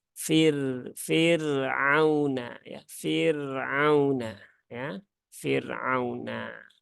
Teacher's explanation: rnya itu wajib dibaca dengan tipis ya wajib dibaca dengan tipis karena dia berhubungan dengan kasrah